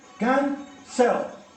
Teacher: ¿Y dónde va la mayor fuerza de voz? En can, ¿verdad?